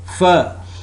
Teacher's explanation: its voiceless labiodental fricative sound